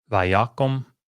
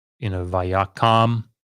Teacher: what happens is this long oo goes to a short OU class vowel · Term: kametz chatuf